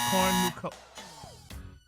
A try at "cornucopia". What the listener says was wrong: You put the accent in the wrong place. Try it again. Yeah, cornucopia. Cornucopia.